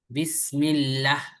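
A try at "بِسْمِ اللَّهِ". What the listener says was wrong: হ্যাঁ, টানাটা হলো না, আপনাকে চিকন ঠিকই হচ্ছে। এই যে আল্লাহ শব্দের লামে যে একটা খাড়া জবর আছে, খাড়া জবর থাকলে কি করতে হবে, একালিফ টানতে হবে না? বিসমিল্লাহ, হ্যাঁ,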